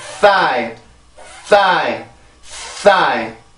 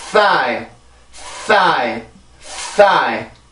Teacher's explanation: 요런 발음들은 이렇게 막히는 폐쇄음이 아니라 이 마찰음이란 말이에요. 마찰음. 이렇게 마찰이 돼서 나오는 소리인데 그 소리의 특징은 공기가 아주 센 것들이에요.